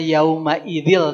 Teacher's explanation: Idgham bila gunnah. Dileburkan namun tidak digunnahkan.